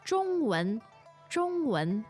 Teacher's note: Zhongwan, the tones are First and second. first and second.